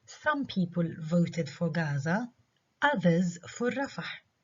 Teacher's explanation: Note that the stress on voted is clearly reduced.